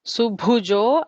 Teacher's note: Bha is a Mahaprana there